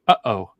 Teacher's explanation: your throat closes completely before the next sound goes out